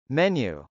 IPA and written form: mˈɛnju (menu)